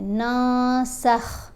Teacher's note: جب بھی نون ساکن یا نون تنوین کے بعد ان 15 حروف میں سے کوئی حرف آ جائے جس میں سین بھی شامل ہے تو ہم نے نون کی آواز کو ناک میں چھپا کر پڑھنا ہے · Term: اخفا